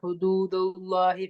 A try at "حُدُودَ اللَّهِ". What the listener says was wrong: அப்ப third sound சரியா இருக்குமா? உங்களோட தூக்கும் தாக்கும் தொடர்பு இல்லாம ரெண்டுமே இல்லாம உச்சரிப்பு வர மாதிரி அதான் கேட்டேன். ஹுதூதல்லாஹி தேர்ட உச்சரிப்பு எடுத்து போகும். தால் வந்து மெலியும் தானே. ஹுதூதல்லாஹி தோன்னு தூக்கு, ஏன் தால தூக்குறீங்க?